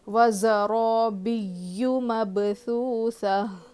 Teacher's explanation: میم با زبر مب، با پہ قلقلہ ہوگا کیونکہ با حروف قلقلہ میں سے ہے، تو با پہ جب جزم ہوگا تو قلقلہ کر کے باؤنس کر کے پڑھیں گے